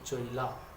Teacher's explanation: উচ্চারণের সুবিধার জন্য বাংলা শব্দের মধ্যে থাকা হ্রস্বই বা হ্রস্বউ তার পূর্বে থাকা ব্যঞ্জন ধ্বনির পূর্বেই স্বতন্ত্রভাবে উচ্চারিত হয়ে যায়। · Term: অপিনিহিতি